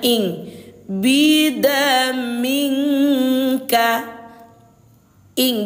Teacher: samar dan dengungnya itu sudah bergabung dia dua harakat. Jadi bunyinya bunyinya ing bidamingka ing Bunda ya. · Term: ikhfa ab'ad